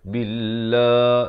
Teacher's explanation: la itu dipanjangkan 2 harakat. Ha baris kasrah.